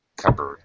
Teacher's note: And this last word, cupboard, the P is silent. It sounds like cupboard.